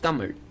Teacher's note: To make this sound, you curl your tongue backwards and almost touch the roof and then try to say L. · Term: fancy R sound